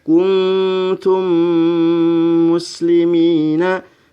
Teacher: maka dibacanya mim sukun masuk ke dalam huruf mim yang berharokat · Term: idgham mutamatsilain, Idgham Mutamatsilain